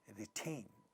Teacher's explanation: In this word retain, second syllable has two syllables, second syllable is stressed. In the initial position of this syllable, we have a voiceless stop, ta, and it's getting aspirated.